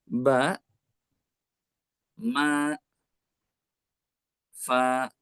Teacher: Saya ulangi huruf yang keluar dari dua bibir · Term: huruf asyafatan